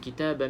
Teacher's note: kalau kita berhenti di sini kena bunyikan Qalqalah sebab ba ni dah jadi sukun